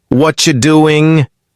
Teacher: exactly the words blend together. Whatcha instead of what are you? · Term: connected speech